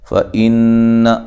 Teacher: فإن حمزہ کو تحقیق سے نون مشدد پہ غنہ ضروری ہے